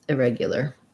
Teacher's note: And then irregular, same stress pattern with reg being stressed. Irregular, you're going to have more of an I sound for that first unstressed syllable.